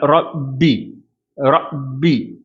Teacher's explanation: நாவினுடைய பிற்பகுதியை உயர்த்தி ரா அப்படின்னு சொல்லணும், பா சொல்லும்போது ப அப்படின்னு சொல்லணும். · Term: தஃஹீம்